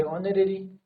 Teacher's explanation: ऑनरेरी में हमारा क्या है, एच म्यूट है